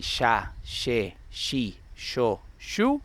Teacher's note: Yeísmo reilado means that the sound of Y's and double L's default to a common sh sound that makes it impossible to distinguish between each of them. So when I say ya, she, she, yo, you, I can either be thinking Y's or double L's.